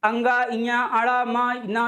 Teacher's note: ये इनका उच्चारण स्थान नासिका भी होता है